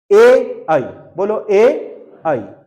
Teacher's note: ए और आई गले से भी निकल रहे हैं और तालु में भी टच हो रहे हैं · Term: कंठ तालव्य